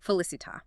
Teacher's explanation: The word drops its heavy tail, undergoing apocope, to become the much lighter, punchier Italian felicita. The meaning is retained, but the physical mass of the word is reduced for efficiency.